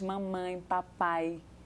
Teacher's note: Pode perceber, em qualquer idioma, os primeiros fonemas são os bilabiais, que a gente junta lábio com lábio